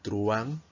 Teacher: solo tiene una sílaba ya que la u y la a van a formar un diptongo